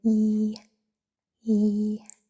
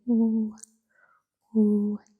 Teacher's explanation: when you say E, E, your lips are not rounded at all. But when you say oo, oo, your lips make a rounded shape.